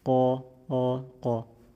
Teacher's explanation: Fatha keeps the heaviness. As you can see, the curvature of the tongue is still there, and the raising of the back of the tongue, so that the sound rises to the dome.